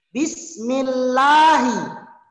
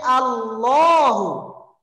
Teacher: Karena dia didahului oleh kasroh, bismi, maka dia menjadi tarkik, dibaca tipis.